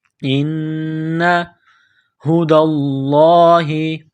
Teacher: ان ہدی اللہ، دال کو لام کے ساتھ پلس کرنا ہے، لفظ اللہ کے نام سے پہلے زبر ہے تو لفظ اللہ کے نام کو موٹا کرنا ہے